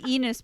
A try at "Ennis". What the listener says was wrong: Yeah, but they don't say Enos. They say Ennis. Ennis.